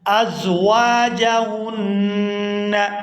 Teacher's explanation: یہاں واو کو الف مدہ کی وجہ سے کھینچ کر ادا کیا جائے گا،